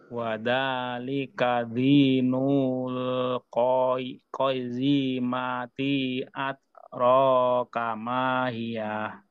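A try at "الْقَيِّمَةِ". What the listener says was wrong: Coba Pak sekali lagi tadi ti-nya ini tadi kebaca panjang tetap pendek Pak ya. Ko Pak, ko. Bukan kak ko. Qayyimati.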